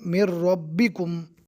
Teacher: میم کو ڈائریکٹ رو سے ملا کر پڑھیں گے